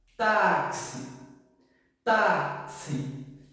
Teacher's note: esse X ele tem som de KS, som de KS na nossa fala. Então, eu tenho 1, 2, 3, 4 letras e 5 fonemas.